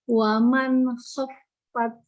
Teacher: Yang dialirkan fa-nya bukan tak-nya.